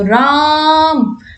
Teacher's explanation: यहां पर हम इसका उच्चारण बहुत लंबे टाइम तक करते हैं तो वो प्लूट स्वर में आ जाता है